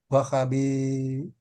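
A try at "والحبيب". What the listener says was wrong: Ada alnya. Wal habibi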